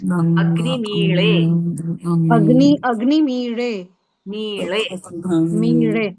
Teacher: Slightly going into the ra sound than the la sound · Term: murdhanya sound